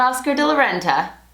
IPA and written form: ˈɔskər de lə ˈrɛntə (Oscar de la Renta)